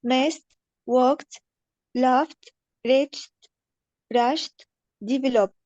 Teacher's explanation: I have to delete the e sound and immediately I have to replace the D with T